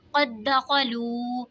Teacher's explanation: क़द दख़लू, यहाँ पे देखें जी दाल में कलकला होगा, वाव साकिन से पहले पेश है तो वाव मद्दा होगा, इसीलिए इसको खींच के पढ़ेंगे